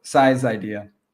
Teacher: So where I'm combining is with the apostrophe S, so the possessive. So make sure when you're pronouncing the possessive S, it sounds like a Z